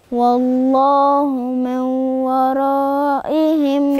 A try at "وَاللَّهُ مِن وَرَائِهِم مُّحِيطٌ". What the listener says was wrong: فين الأربع محيط. فين الأربع حركات بتوع المد؟ والله من ورائهم محيط.